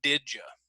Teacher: when we put the D and the Y together if you remember it's going to sound like the J sound did you did ok so again you can practice that there